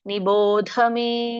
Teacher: ನಿಭೋಕೆ ಮಹಾಪ್ರಾಣ ಇಲ್ಲ ದ ಗೆ ಮಾತ್ರ ಮಹಾಪ್ರಾಣ ಇರೋದು